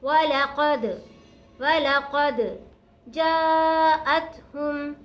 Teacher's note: دال ساکن ہے، دال حرف قلقلہ میں سے ہے تو دال پر قلقلہ کریں گے، جیم کو مد کی وجہ سے لمبا کھینچیں گے.